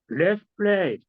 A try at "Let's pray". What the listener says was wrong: Let's pray. 플레이 하지 말고 Let's pray.